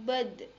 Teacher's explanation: Ketika dalam posisi mati, maka da akan memantul.